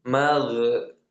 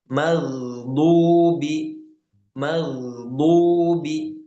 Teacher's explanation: Huruf gin bukan huruf qalqalah. Jadi dia tanpa pantulan.